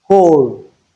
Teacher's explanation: in words like whole, we don't have the w sound, but we have WHOLE.